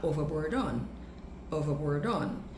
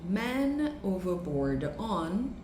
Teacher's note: Overboard termina com D e on começa com O, com uma vogal, a mesma coisa, consoante e vogal.